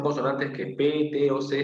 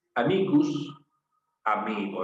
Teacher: Se han transformado de consonantes sordas a consonantes sonoras. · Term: sonorización